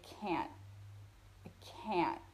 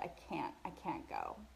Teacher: we don't say the t sound at the end of the word. We say can't.